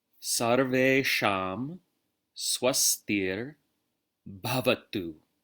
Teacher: notice the V is pronounced like a W